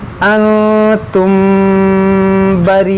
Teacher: نون ساکن کے بعد تا ہے تو یہاں پر اخفا ہوگا، یعنی اخفا کا قاعدہ لگے گا، یعنی غنہ ہوگا